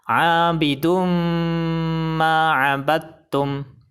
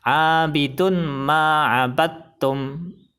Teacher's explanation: bacanya harus dimasukkan ke huruf idgham bi gunnah dan disertai dengung 2 harokat